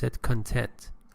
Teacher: you usually put the stress on the first syllable